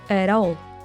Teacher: the T from at is turned into a flap